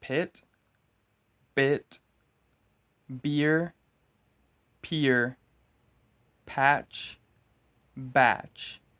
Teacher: You pronounce these sounds by closing your lips together for a moment before forcing air out of your mouth. P and B. P is voiceless.